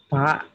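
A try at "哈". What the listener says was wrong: Kurang ada h-nya, ha. Oke, ada ha, ha, ha, ha. Jadi satunya pa, satunya pa.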